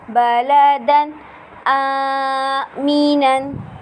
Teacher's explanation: تنوین کے بعد حروف حلقی کا حمزہ آ رہا ہے، اس لیے یہاں پر اظہار ہوگا، یعنی تنوین کے بعد حروف حلقی کا حمزہ آنے کی وجہ سے یہاں پر غنہ نہیں ہوگا